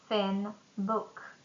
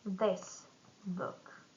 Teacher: the first th is voiceless and the second one is voiced